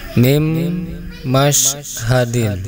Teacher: Perhatikan di situ ada nun mati menghadapi huruf mim. Dan ketika dibaca maka harus didengungkan, ya. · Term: idgham bi gunnah